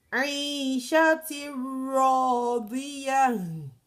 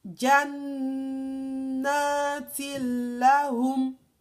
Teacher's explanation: So raw and lam, you don't stress them, they are bigoiri gunna. Idgham bigoiri gunna without the stress from your nasal cavity.